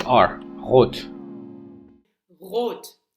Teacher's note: So we are having the voice uvular trill. Technically it's not a trill because if you can pronounce it continuously, it's a fricative. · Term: uvular R